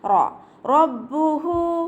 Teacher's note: റോ ഫതഹ വന്നതുകൊണ്ട് നമ്മൾ ഉയർത്തിയിട്ട് ഉച്ചരിക്കും. റോ എന്നുള്ള സൗണ്ട് കൊടുക്കുക.